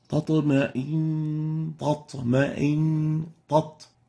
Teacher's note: Because a velarized letter comes after the ta, it makes the person tend to make it also velarized. And it ends up with a double ta, tatma'in, and this is wrong. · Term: velarizing